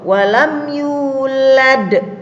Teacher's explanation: sukun karena waqaf, artinya mati di akhir kalimat, maka dibaca qalqalah kubra atau qalqalah, maaf ini keliru tulisannya ya, qalqalah besar ya, kubro itu.